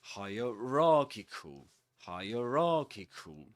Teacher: this word is double stressed, which means that the main stress goes on ra, and the secondary stress goes on higher, hierarchical, hierarchical.